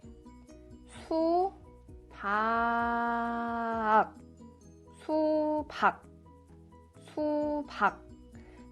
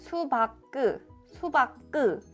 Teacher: If you pronounce like 수박그, 수박그, it sounds very weird. You have to block the air at the end.